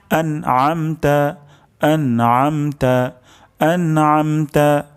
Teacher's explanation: আইন উচ্চারণ হবে গলার মাঝখান থেকে